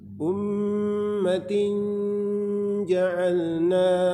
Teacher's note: Jadi kita sembunyikan bunyi nunnya menjadi huruf ja, makhraj huruf ja. Ummatin tin di langit-langit, di lidah dibawa ke langit-langit. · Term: ikhfa